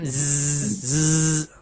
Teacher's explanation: Kalau tak keluar lidah, dia akan jadi suara macam zzz. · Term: huruf zai